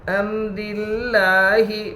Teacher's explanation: لفظ اللہ کے لام سے پہلے زیر ہے اس لیے لفظ اللہ کے لام کو باریک پڑھیں گے · لام کے اوپر کھڑا زبر ہے، کھڑا زبر برابر ہے الف مدہ کے، اس لیے کھڑا زبر کو ایک الف کے برابر کھینچ کر پڑھے · را کے نیچے زیر ہے اس لیے را باریک ہوگی. الف لام تعریف کے بعد حروف شمسی کے 14 حروف میں سے لام ہے، اس لیے الف اور لام کو نہ پڑھیں گے بلکہ بعد والے حرف سے ملا کر پڑھیں گے.